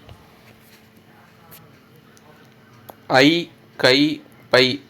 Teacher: ஐகார எழுத்து வந்து தனித்து வரும் இடங்கள்ல இரண்டு மாத்திரை அளவா ஒலிக்கும்